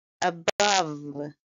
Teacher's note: it's a two syllable word and stress is on the second syllable